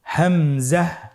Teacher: হামজা হরফটির উচ্চারণের স্থান হায়ের মতোই। হা হরফটি যেখান থেকে আমরা উচ্চারণ করেছি একই জায়গা থেকে আমরা হামজা হরফটি উচ্চারণ করব হলকের শুরু হতে। আপনারা আমার সাথে বলুন, হামজাহ।